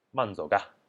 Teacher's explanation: in the way that people actually say it in Yunnan, it's more just ga or ga, like the fourth tone. So 慢走ga.